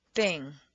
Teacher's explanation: The tongue's position for the unvoiced TH is similar to that of S, but for TH, the tongue is extended through the teeth instead of hissing behind the back of the teeth.